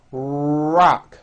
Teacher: notice how my lips are coming forward and my tongue moves back in my mouth and I push out the are sound watch this rock do